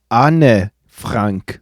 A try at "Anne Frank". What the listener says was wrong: So instead of it just being one syllable, Anne, it's 2 syllables, Anne, and then the last name just has the German A vowel. Anne Frank.